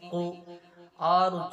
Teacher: छोटी जबान है उसके थोड़ा नीचे हिस्से से हलक की तरफ से कौफ अदा होता है